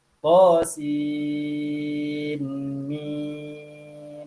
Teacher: Nun tersebut izhar, dipisahkan. Qasin, sebut dengan nun.